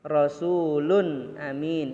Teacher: izhar dibaca jelas dan tidak berdengung